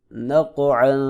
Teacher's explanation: کھڑی زیر ہے لہذا ایک الف کے برابر لمبا کریں گے، قاف موٹا بھی کریں گے اور حروف قلقلہ میں سے ہے، ساکن ہے لہذا یہاں پہ قلقلہ بھی کریں گے